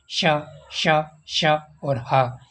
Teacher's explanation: वायु मार्ग छोटा हो जाता है उनको संघर्षी व्यंजन कहते हैं और वायु घर्षण के साथ बाहर निकलती है